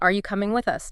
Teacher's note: Feel that rise on you and with us? And the little dip at the end. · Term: typical question pattern